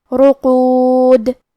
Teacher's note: آخری میں ہم یہ کلمہ پہ رکیں گے تو دال پہ جزم سے رکیں گے لہذا یہاں دال کا حکم ہوگا قلقلہ. قلقلہ کا معنی ہے حرف ساکن کو ہلانا، تو ہم دال کو ہلاتے ہوئے یہ کلمہ پہ رکیں گے